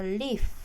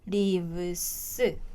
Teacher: f로 발음되던 거를 v로 목이 떨리는 음으로 바꾸고 es를 붙입니다